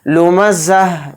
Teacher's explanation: حالت وقف میں تا کو ہائے ساکنہ بنا کر پڑھیں گے، یعنی اس میں ہا کی آواز نکلے گی، لُمَزَّہ، اس طرح سے۔